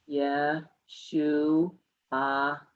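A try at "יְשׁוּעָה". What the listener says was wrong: No ha. Yeshua.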